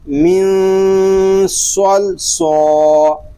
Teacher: چونکہ صاد یہ حروف مستعلیہ میں سے ہے، اس کو پور بھی پڑھیں گے. من صل سو، لام دو زیر لن، من صل صالن، اس کو صل سو نہیں پڑھیں گے، لام ساکن ہے، اس کو سکون کے ساتھ ادا کریں گے.